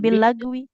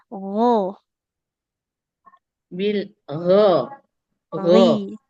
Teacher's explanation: kalau huruf ginnya dia tuh ditenggorokan atas mengalir suaranya